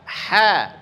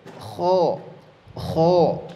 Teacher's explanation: Maka ha tipis, ha datar saja lidahnya, tapi kalau di sini kho, kho dia huruf tebal, terangkat pangkal lidahnya, maka terdengar bulat atau tebal bunyi suaranya